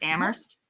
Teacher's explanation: So the H in Amherst is silent.